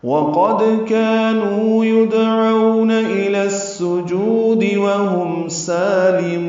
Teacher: واو ہونٹوں کی نا تمام گلائی سے ادا کریں گے. قاف پر پڑھیں گے، دال ساکن پہ قلقلہ ہوگا.